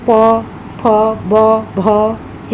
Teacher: प वर्ग जैसे प, फ, ब, भ, इस तरह से हम लोग बोलते हैं, तो ओष्ठ का भार ज़्यादा पड़ता है, तो इसीलिए यह ओष्ठ में आते हैं।